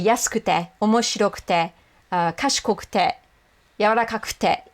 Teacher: Even the u part of the su, they don't go yasukute unless they're really enunciating. · if it doesn't sound like I'm saying kute and I'm just saying kte, it's because I am just saying kte, because that's how native speakers pronounce it